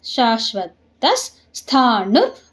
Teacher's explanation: ತಾ ಆದ್ಮೇಲೆ ಅರ್ಧ ಸ, ಯಾಕೆಂದ್ರೆ ವಿಸರ್ಗದ ಮುಂದೆ ಸ ಇದೆ